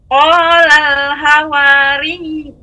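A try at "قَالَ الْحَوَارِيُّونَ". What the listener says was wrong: Ha-nya lebih diperjelas Ibu. Qolal hawariyuna nahnu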